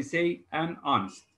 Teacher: here we have the silent h and the first sound we pronounced is o so we say an honest